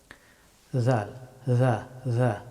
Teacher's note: যা হরফটি উচ্চারিত হয় জিহ্বার অগ্রভাগ এবং সামনের দুই দাঁতের অগ্রভাগ